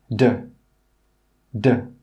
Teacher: This sound is a voiced sound, so that means when you make the sound, your throat must vibrate. D, d.